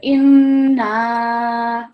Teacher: not only do we produce the nasal sound because of the shadda above the noon, we are also going to prolong it for at least 3 seconds